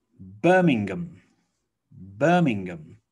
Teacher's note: okay birmingham birmingham so you might want to say birmingham but we don't really say ham it reduces down to um